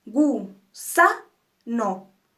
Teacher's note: sa es nuestra sílaba tónica es la sílaba más fuerte y es la que más suena